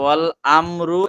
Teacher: এখানে রটা একটু ধরে রাখার কারণে টান হয়ে যাচ্ছে